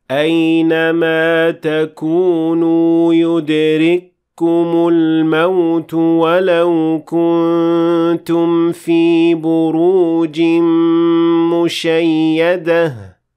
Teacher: the kaf will not be pronounced at all because it will be completely merged with the kaf that comes after it. That's why the kaf after it is doubled or has shadda.